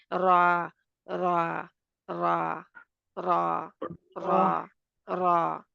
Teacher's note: जुबान की जो नोक है वह ऊपर वाले चार जो दांत है उनके गम लाइन पर जहां पर गम एरिया है उसके ऊपर लगती है